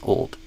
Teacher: Yeah, aim for the dark L. Old. Tongue pulling back toward the throat with neutral lips.